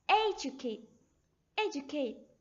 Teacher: stress runs through the first syllable